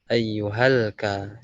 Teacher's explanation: Jadi langsung ngalir dari ha ke huruf lam. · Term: hamzah wasal